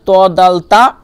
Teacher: সামনের উপরে দুই দাঁতের গোড়া থেকে লেগে উচ্চারিত হচ্ছে